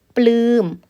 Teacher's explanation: เราออกทั้งเสียงปปาและลลิงนะคะควบไปด้วยกันเลยนะคะ